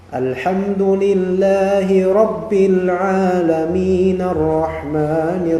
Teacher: Dan nun kemudian melebur ke arrahman.